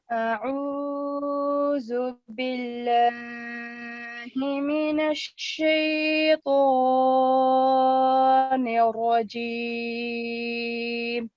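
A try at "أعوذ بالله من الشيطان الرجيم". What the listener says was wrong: टू count लंबा करने की कोशिश करें, ज्यादा लंबा आपका हुआ है। टू काउंट कोशिश करें कि टू काउंट लंबा हो। बहुत ज्यादा लंबा ना करें।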